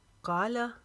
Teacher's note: کا کو لمبا کریں گے الف کی جتنا، لا کو لمبا نہیں کریں گے